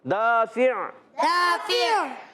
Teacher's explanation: دال الف زبر دا، الف مدہ ہے، فا کے نیچے زیر، اور عین پر دو پیش کی تنوین ہے، پر جب وقف کریں گے آواز آئے گی دافع، عین کی ادائیگی حلق کے درمیان والے حصے سے ہوگی